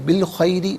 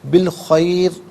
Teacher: بالخیری باریک پڑھا، بالخیر یہاں پر کر کے پڑھیں گے